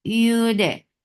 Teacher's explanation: This is idgham with gunna. So keep the sound in your nose for a longer time.